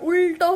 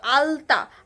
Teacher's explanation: যেখান থেকে উচ্চারিত হচ্ছে এবং আলতা, আলতা হচ্ছে দন্ত, ঠিক আছে, আর উল্টো হচ্ছে মূর্ধন্য, ঠিক আছে, মূর্ধন্য ল আর মূর্ধা থেকে উচ্চারিত হচ্ছে, আর আলতা হচ্ছে দন্তের সাহায্যে উচ্চারিত , দাঁতের সাহায্যে উচ্চারিত হচ্ছে। কিন্তু দেখো আমি যদি এখন উল্টোর